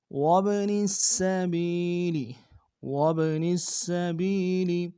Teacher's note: نون کو سین کے سامنے لائیں گے، سین کی سیٹی باریک ہوگی، سین کے اوپر تشدید زور دیں گے